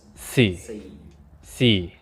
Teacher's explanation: So it's just like the English word see, Si. except the intonation drops. So it starts neutral and then drops.